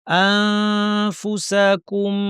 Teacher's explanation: দাঁতকে ঠোঁটের উপর এনে ফা বলার জন্য রেডি, নাক থেকে গুন্না। আনফুসাকুম ফাতাবা আলাইকুম ফাতাবা বা পড়ি আতে চলে যাব। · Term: ইখফার হরফ ফা